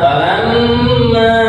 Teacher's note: ini mim tasydid dibaca gunnah. Ukuran gunnah atau mendengungnya 2 2 harokat.